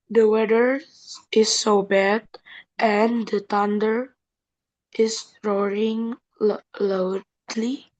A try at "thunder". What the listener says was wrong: The thunder. Tadi the-nya udah betul TH-nya. Thundernya kelupaan bunyinya. Tadi bacanya bunyinya T, thunder.